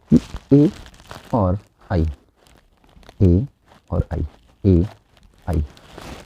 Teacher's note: तो अ का कंठ हो गया, ई का तालु हो गया, तो कंठ प्लस तालु मतलब कंठ तालव्य